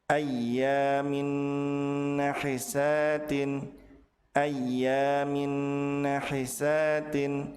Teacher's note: Tanwin yang dilebur tidak boleh dibaca tanpa ditahan. · Apabila tanwin bertemu dengan nun, maka tanwin dilebur ke huruf nun dengan cara ditahan dua harokat dan disertai dengan gunnah